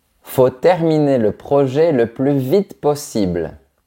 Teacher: quand on parle vite, le mot il disparaît complètement dans les structures